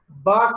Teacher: It is a voiced sound. Place, you are closing two lips. It is bilabial. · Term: b sound